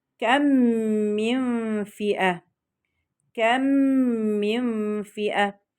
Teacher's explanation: هضغم الميم الساكنة في الميم المتحركة إدغاما كاملا مع الغنة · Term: الإدغام الشفوي